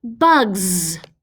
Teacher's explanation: When we have that suffix S, what can that S sometimes sound like? It can sound like a Z.